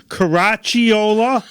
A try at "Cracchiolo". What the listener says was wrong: Almost. It's an O at the end. Cracchiolo.